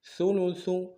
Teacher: سا کو باریک ادا کریں گے، اگلے سا کو باریک ادا کریں گے